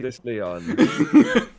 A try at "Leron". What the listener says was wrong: Not Leon, Leron, different. There's an R.